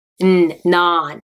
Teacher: the tip of your tongue is behind your front teeth